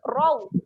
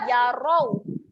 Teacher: Seterusnya bunyi huruf ra. Ra baris atas berjumpa dengan waw. Kita akan bunyikan dengan raw.